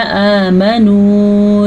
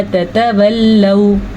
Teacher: वाव मद्दा खींच के पढ़ा जाता है, जबकि वाव लीन नरमी के साथ पढ़ा जाता है